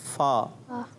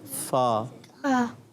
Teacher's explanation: اوپر والے دانتوں کے کنارے اور نچلے ہونٹ کے تر حصے سے۔ اوپر والے دانتوں کے کنارے، نیچے والے ہونٹ کے تر حصے سے۔